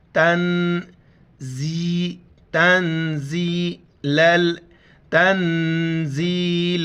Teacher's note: نون ساکن پر بھی ہم ناک میں آواز پیدا کریں گے